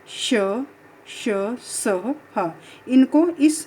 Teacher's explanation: इन चारों को ऊष्म व्यंजन कहा जाता है, क्योंकि इन व्यंजनों के उच्चारण में वायु मुख में किसी विशेष स्थान से टकराकर घर्षण या रगड़ खाकर बाहर निकलती है और उनमें ऊष्मा या गर्मी पैदा होती है, इसलिए इनको ऊष्म व्यंजन कहा जाता है।